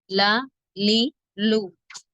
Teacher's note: நாவின் நுனி மேல்முரசுடன் இணையும் போது உண்டாகிறது